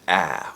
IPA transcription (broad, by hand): æ